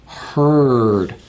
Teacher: back teeth and the ends of the back of the tongue are touching it's voiced if I touch my throat I can feel it vibrate if